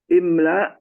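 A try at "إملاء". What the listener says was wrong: Terdengar lamnya panjang. Imla, gitu. Apa pertimbangan sehingga lamnya panjang, Pak?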